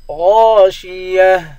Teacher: گولتا پر جب وقف کرتے ہیں تو گولتا ہا بن جاتی ہے